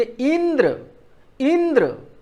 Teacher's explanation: जैसे यहाँ द और र दो व्यंजनों की संयुक्त ध्वनि है, उसी के पहले ई पर हम बल दे रहे हैं। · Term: बलाघात